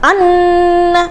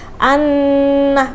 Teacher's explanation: ketika ada nun dan mim yang bertasydid maka bunyinya adalah gunnah, yang artinya tidak perlu ditekan. Jadi nggak usah anna.